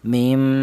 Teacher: Yang pertama mim dibaca ghunah yaitu alasannya ada huruf mim yang bertasdid. Artinya ghunah yaitu ada suara berdengung. Adapun untuk panjangnya dengung yaitu dua harakat atau dua ketukan.